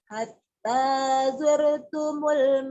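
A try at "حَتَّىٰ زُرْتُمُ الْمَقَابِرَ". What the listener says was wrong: Zur, zai, buzur timur. Hatta zur, jangan jur. Itu orang Sunda, jimnya jadi zai. Zur, hatta zur.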